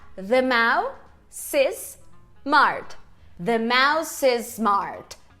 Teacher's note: o segundo S ali, o do smart, ele vai ser um pouquinho mais longo do que o primeiro, porque ele está representando dois S's ali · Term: conectar esse S